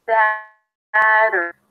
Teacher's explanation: That's also the primary syllable, longer and higher in pitch. Satter, flap T and a schwa